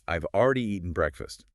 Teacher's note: Main stress is on already and eaten. The contracted form, I've allows that to happen naturally.